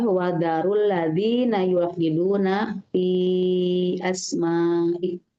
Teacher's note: Wadharul ro-nya dibaca tafhim karena berharakat dhammah. Kemudian rul ladzi itu ada iltiqa'u sakinain ya Ustazah.